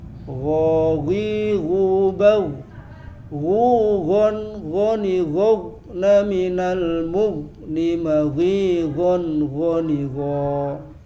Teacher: Padahal ghin itu bukan huruf qalqalah. Jangan dimantulkan. Gho halus. Ghi ghubau ghon ghoni ghna minal mughni maghi ghon ghoni gho.